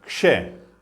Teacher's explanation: जीवा दोनों तरफ से दो जगह स्पर्श करेगी, कंठ और मूर्धा, तो इसलिए बन गया कंठ मूर्धन्य।